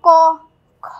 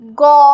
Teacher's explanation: অর্থাৎ ধ্বনিদ্বারের গলার এখানে যদি আমরা বাইরে থেকে দুটি আঙ্গুল রাখি, সেক্ষেত্রে আমরা বুঝতে পারবো ক, খ, গ। এই যে আমরা যদি ক বলি আমাদের কম কাঁপছে জায়গাটা, খ বললেও কম কাঁপছে, কিন্তু গ বললে একটু বেশি কাঁপবে